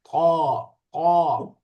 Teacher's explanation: জিহ্বাটা বেশি ভাঁজ করে দাঁতের সাথে লাগবে।